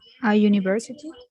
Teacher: el sonido you es una semivocal. O sea, se acerca más a una consonante que a una vocal en fonética y fonología.